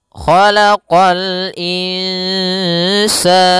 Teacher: huruf kha pangkal lidah kita terangkat. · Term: huruf isti'la